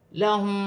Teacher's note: میم ساکن کے بعد میم مشدد آ رہی ہے، ادغام مال غنہ کا قاعدہ ہے، میم ساکن میں غنہ کیا جائے گا